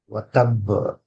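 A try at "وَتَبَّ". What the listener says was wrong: బా శబ్దం వెనక్కి రావాలి. బ.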